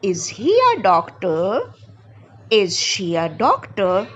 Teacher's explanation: But when I am saying a question, is he a doctor? Is she a doctor? My intonation goes up.